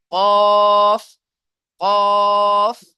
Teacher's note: জিভের গোড়া আর তার বরাবর উপরের তালুর সাথে লেগে উচ্চারণ হবে